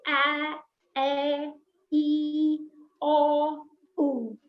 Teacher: without the stopping of the air directly from the lungs we have a complete open mouth